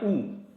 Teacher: उ जब बोलेंगे तो होठ का आकार क्या हो जाएगा, गोल